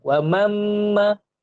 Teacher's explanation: Kalau kita baca wa mamma, ada rasa getaran di hidung. Bermaksudnya hidung ni adalah makhraj khayshum.